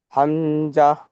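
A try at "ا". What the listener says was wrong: হামজা নয়, এটা আলিফ, কারণ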